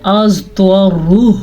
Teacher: را کو بھی پر پڑھیں گے کیونکہ را کے اوپر پیش ہے